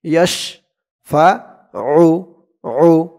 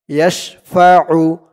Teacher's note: আইনের আওয়াজটা গলার ভিতর থেকে শক্ত হয়ে বের হবে